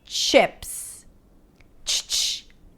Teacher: you want to think of it as if you're pronouncing a T sound and then releasing it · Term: ch sound